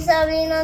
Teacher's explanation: He can't even make the sound of the soft R. He says sobrino with an L, sobrino instead of sobrino, which means nephew.